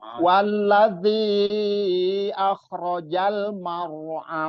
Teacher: Jadi marnya itu, ro-nya itu kalau di awal ro sebelum ro-nya ro sukun itu berharokat fathah, jadi dibacanya tebal atau tafkhim kalau istilah maro, jadi ditebalkan. Walladzi akhrajal mar'a, ditebalkan ro-nya karena dia nanti ada sih bahasan untuk huruf ro sendiri itu lumayan banyak sebetulnya.